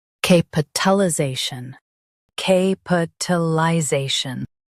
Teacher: Stress za and keep cap light.